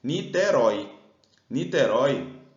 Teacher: ela é uma oxítona terminada em ditongo